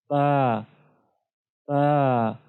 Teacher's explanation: जब दोनों होंठों के अंदर वाले गीले हिस्से आपस में मिलते हैं तो इससे बा अदा होता है